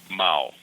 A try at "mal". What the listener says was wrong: You pronounce the A little bit more instead of O, like a mal.